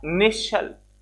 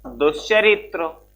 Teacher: दंत्य सा को हमने बदल दिया तालव्य सा में।